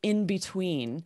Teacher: it's faster for us to have the m sound before the b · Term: assimilation